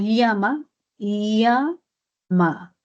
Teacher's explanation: Y el lateral palatal, cuando decimos llama, llama, sale por un lado de la lengua